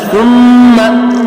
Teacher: سا پھر نرم حروف میں سے ہے، زبان کی نوک سے ادا کرنے کی کوشش کریں گے